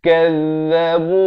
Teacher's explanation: Kazzabu 2 harakat muncungkan mulut.